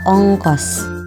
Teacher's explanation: vokal O, tengah bawah belakang bundar pada kata ongkos